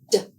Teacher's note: To make the sound of the letter D d air is blocked by the tip of the tongue touching the ridge behind the teeth. D is a voiced sound.